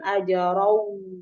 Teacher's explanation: Ajarau itu ada tanwin fathah, tanwin bertemu dengan waw itu dibaca idgham bi gunnah sehingga bacanya didengung dan didengung bacanya dan langsung dilebur ke huruf waw